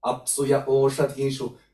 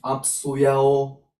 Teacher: This is just a pause which is in between 2 vowels, ya and o